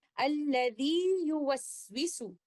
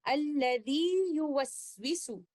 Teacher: پہلے والا لیٹر یا ایک مد حالت میں ہے جس کا مخرج جوف ہے، لیکن دوسرے والا لیٹر یا ایک مد حالت میں نہیں ہے اور اس کا مخرج زبان کے مڈل سے ہے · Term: اظہار